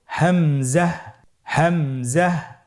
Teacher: হামজা হরফটি উচ্চারণ ক্ষেত্রে বারিক করে উচ্চারণ করতে হবে এবং এখানে টেনে পড়া যাবে না, দ্রুত পড়তে হবে।